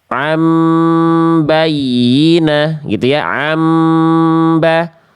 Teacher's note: Ketika nun sukun atau tanwin berjumpa dengan huruf ba, namanya iklab Bunda. Tuh, membalik bunyian menjadi am